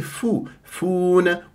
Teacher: واو ساكنه قبلها فا مضموم م طبيعي حركتين